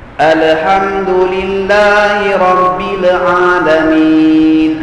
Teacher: dia sebut lam dengan hujung lidah jadi mudah berlaku lontaran suara yang kedua sehingga terjadilah Qalqalah